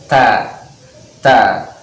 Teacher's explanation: Kalau huruf ta itu disertai dengan keluarnya nafas atau hames ya, dengan jelas ta.